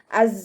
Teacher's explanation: പല്ലിനെ ചുണ്ടിൽ തട്ടിക്കാതെ നോക്കുക. സായുടെ സൗണ്ടിന് അസ് എന്നുള്ളൊരു സൗണ്ട്, ഒരു തേനീച്ചയുടെ മൂളലിൻ്റെ ഒരു സൗണ്ട് ഉണ്ടല്ലോ, അതാണ് കൊടുക്കേണ്ടത്